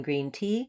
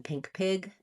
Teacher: So main error to watch out for is between the E, as in green tea, and the I, as in pink pig, tense and lax, but both high front vowels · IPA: /i/ vs. /ɪ/